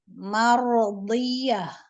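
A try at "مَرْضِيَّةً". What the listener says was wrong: Iya-nya kurang tasdid.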